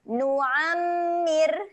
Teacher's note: ra-nya keadaan dia nipis. Jadi tak perlu muncung lah. Nu'ammir. Senyum saja.